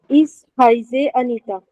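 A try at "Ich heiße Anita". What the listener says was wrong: Sehr gut.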